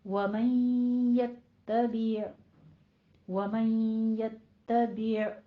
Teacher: आगे वो मन यत्तबि में नून साकिन का कायदा इदगाम माल गुन्ना करना है और यत्तबि नहीं कहना, आइन के ऊपर कलकला नहीं करना है, यत्तबि ऐसे स्टॉप कर देनी है आवाज।